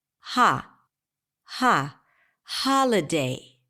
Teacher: So in the word holiday, the primary stress falls on the first syllable.